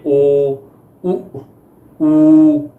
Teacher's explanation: ਜਿਨ੍ਹਾਂ ਸਵਰਾਂ ਨੂੰ ਉਚਾਰਨ ਸਮੇਂ ਬੁੱਲ ਗੋਲਾਈਦਾਰ ਹੋ ਜਾਂਦੇ ਹਨ ਉਹਨਾਂ ਨੂੰ ਗੋਲ ਸਵਰ ਕਿਹਾ ਜਾਂਦਾ ਆ